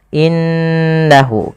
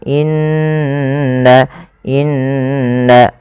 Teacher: gunah yaitu memasukkan suara ke rongga hidung dan ditahan